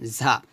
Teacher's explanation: ঝাটা জিহ্বার আগে নিচে দাঁতের সাথে লাগিয়ে উচ্চারণ করবেন